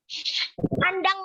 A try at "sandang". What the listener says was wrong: Sandang, bukan kandang ya. Sandang ya, S.